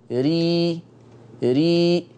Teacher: الراء المرققة ري ري، حسوا بمؤخرة اللسان نزلت. يبقى التفخيم والترقيق يتعلق بمؤخرة اللسان ولا علاقة بالشفة، ولا علاقة بالشفة.